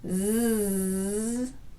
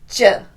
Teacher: Continuous airflow, z, and burst, j.